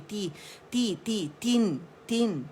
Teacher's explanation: इसे मजहूल नहीं पढ़ेंगे, मारूफ पढ़ेंगे। ता जो है ना, ई बी सी जो हमारी कसरा है ना, वो इस साउंड से ज़्यादा होती है, ती ती ती, तीन तीन, ठीक है।